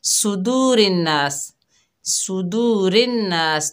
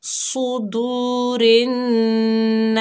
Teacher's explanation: صاد کو موٹا پڑھنا ہے، صاد کو سین نہیں پڑھنا. اور نون میں ہم غنہ کریں گے.